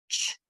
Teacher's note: It's only ch. No sound, only air. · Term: CH sound